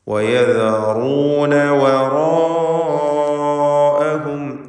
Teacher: യദറൂന എന്ന് പറയുമ്പോഴും വറാഅഹും ഇതൊക്കെ റാഇനെ തടിപ്പിച്ചാണ് ഉച്ചരിക്കുന്നത്. തഫ്ഖീം ചെയ്യപ്പെടുന്ന അക്ഷരമാണ് റാ. യദറൂന അതുപോലെ വറാ എന്ന് പറയുമ്പോൾ ആ ദീർഘത്തിലും തഫ്ഖീം നിലനിർത്തണം എന്നതാണ്.